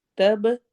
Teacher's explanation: تب با پہ قلقلہ ہوگا، ایکو ساؤنڈ